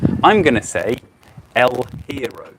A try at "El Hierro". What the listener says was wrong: El Hierro. Yeah, the H is not pronounced at all. El Hierro.